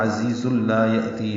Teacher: دونوں زا تیز صفیر کی آواز سے ادا کریں گے. زیز، زا پڑھیں گے، زال نہیں پڑھیں گے. · لا الف مدہ، یہ لام مشدد اس لیے ہے کہ پیچھے زا پر تنوین ہے اور ملانے کی وجہ سے ادغام کامل ہو رہا ہے